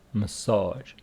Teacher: massage with the stress on the second syllable ma a and the rest of the story the same message